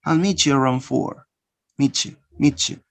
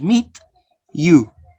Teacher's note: Ta, ya becomes cha. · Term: reciprocal assimilation